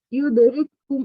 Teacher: یہ والا جو کاف تھا ایک وہ ہم نے نہیں پڑھا، وہ اس کے اندر مل گیا دوسرے کاف سے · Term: ادغام مثلثین